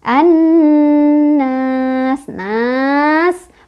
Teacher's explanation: Ya, nunnya gunnah, sebabnya karena nun bertasydid, dibacanya digunnahkan atau didengungkan, dengungannya ditahan 2, 3, atau 4